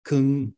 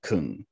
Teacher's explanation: the difference in tone isn't just one of pitch but also one of phonation and duration